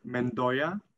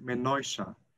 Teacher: something like menosha so they put in this chef sound and they also drop the d which is reduced